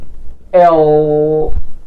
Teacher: الهواء هيبقى جلايدز، هينساب او هينزلق من جانبي اللسان